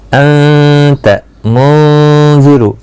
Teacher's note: نون کو ظاہر نہیں کریں گے, یہاں اخفا ہوگا